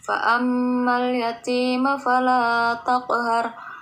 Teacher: Fa'amma mim tasydid disebut gunnah musyaddah, dibaca berdengung. Yati termasuk ke dalam mad tabi'i ataupun mad asli.